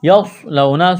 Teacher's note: سواد کو موٹا کرنا ہے، سٹی کی آواز پیدا کریں گے · واو لین ہے، بغیر کھینچ کے پڑھنا ہے